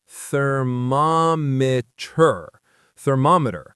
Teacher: The stress is on the mom